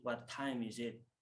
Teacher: Di situ kan terdapat double T ya. T pertama pada kata what dan T yang kedua pada time. Jadi T pada kata what itu dihilangkan ya. Jadi bunyinya menjadi what time is it. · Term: glottal